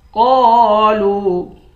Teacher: قاف کو بھی کھینچیں گے، لام کو بھی کھینچیں گے، دونوں حروف مدہ ہے، ایک الف کی مقدار کھینچ کر پڑھیں گے